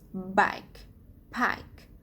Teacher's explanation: There are, according to place of articulation, there are 9 types of consonants. The first one is bilabial, sounds with two lips together.